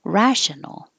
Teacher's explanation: And if there's no E, it's rational. Stress on the first syllable